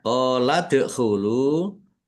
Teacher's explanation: Qala dkhulu qaf fathah alif mat tabi'i panjang 2 harokat. Dal sukun bacaan qalqalah dibaca memantul ditampakkan pantulannya. Lam dhammah wawu sukun mat tabi'i panjang 2 harokat.